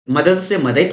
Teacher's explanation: घोष से अघोष के वर्ण में परिवर्तन